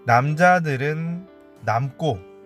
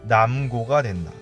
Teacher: 남자들은 남고 했을 때는 꼬로 발음했는데 뒤에 남고 할 때는 고로 발음했다는 거죠. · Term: 된소리